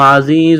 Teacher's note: زا میں سیٹی کی آواز پیدا کریں گے